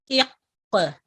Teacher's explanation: जैसे ये काफ का लफ्ज है, काफ लेटर है, इस पे आप देखें कि इक़, यानी काफ को जब पढ़ना शुरू करेंगे तब हम इसको झटका नहीं देते, जहां पे काफ की आवाज खत्म हो रही होती है वहां पे जुम्बिश देके इसको हम कलकला करते हैं